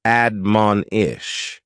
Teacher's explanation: admonish has three syllables with the stress on that second syllable